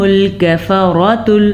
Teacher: کفرۃ میں را کو پر پڑھیں گے اور پھر فجرہ میں اس را کو پھر پر پڑھیں گے کیونکہ اور اس را پہ بھی زبر ہے اور اس پہ بھی زبر ہے.